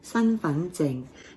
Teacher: It is the high tone sun, way up high for sun, and then you've got your mid-rising fun, and then your mid-tone zing